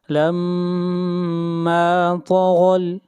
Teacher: طا اور غین یہ دونوں حروف مستعلیہ میں سے ہیں، ان دونوں کو موٹا پڑھا جائے گا